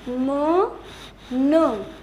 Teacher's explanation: मुंह से हवा बिल्कुल भी क्रॉस नहीं हो रही है, जो टोटली की टोटली हवा जो है वो नाक के जरिए बाहर से निकल रही है। तो उस टाइप की जो साउंड्स होती हैं उन्हें हम क्या कहते हैं, नोजल साउंड्स।